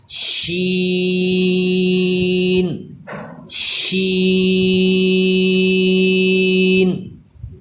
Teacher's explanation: اس کو بھی شین نہیں کرنا بلکہ منہ سے ادا کرنا ہے، ناک میں آواز نہ جائے